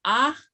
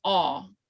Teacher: this comes from more of the front part of your mouth. Aw kind of comes from the back, almost to like the back of your throat. So ah, aw. And so this is haw.